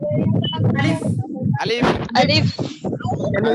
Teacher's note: এই আলিফটা হচ্ছে একটু কঠিন কঠিন একটু ভারী হবে